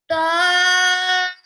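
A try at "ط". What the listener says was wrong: तो आवाज मोटी कीजिए।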